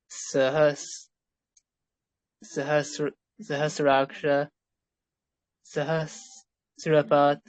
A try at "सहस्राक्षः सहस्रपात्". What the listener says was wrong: It's a bit flat. Take the tone down first. Sahasraksha Sahasrapat.